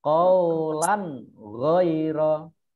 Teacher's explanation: Qaulan ghaira. Ini ada fathah tanwin bertemu dengan ghain dibaca jelas, bacaan izhar